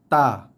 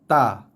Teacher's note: Huruf yang ketiga ini adalah huruf yang datangnya daripada hujung lidah.